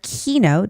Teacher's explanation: Keynote. There is the stress on the first syllable.